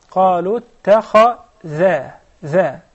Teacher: So the kha is mufakhama, but do not sacrifice the dhal for the sake of the kha. قالوا اتخذ ذا not va. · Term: dhal is muraqqaqa